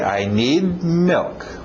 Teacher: Engole aquele D no final.